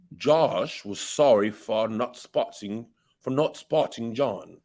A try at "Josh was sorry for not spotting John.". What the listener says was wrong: Let's go even more extreme with this rounding of your lips. And we want to keep this vowel nice and short always.